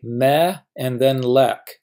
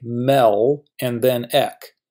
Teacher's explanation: Hebrew syllables begin with a consonant. That is, we have to say meh and then lek. We can't say mel and then ek.